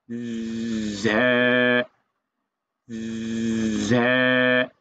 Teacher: জিহিবার আগাটা সামনের উপরে দুই দাঁতের মাঝখানে চাপ দিয়ে ধরবেন, মাঝখানে, গোড়ায় না, মাঝখানে।